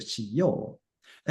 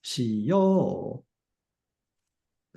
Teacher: all of the volitional form verbs, they get the stress on the o or yo. So し よ う, stress is on the o vowel.